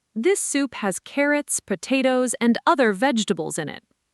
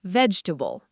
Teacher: Say the whole sentence at a natural, slightly quick pace, and really listen to how vegetables moves fast, almost like it's one smooth motion rather than 4 distinct beats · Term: compressed